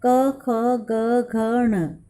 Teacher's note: कंठ्य या गले से निकलने वाले शब्द हैं